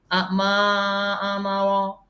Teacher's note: تو یہاں دیکھیں کیا ہے جی، یہ بھی جزم بن جائے گا اینڈ پہ جا کے، اور را پر ہم رکیں گے. ما آمارا، ماں لمبا کریں گے، آمارا لمبا نہیں ہوگا، جلدی پڑھا جائے گا